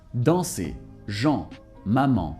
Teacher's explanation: In standard French, en and an are going to be pronounced the same way.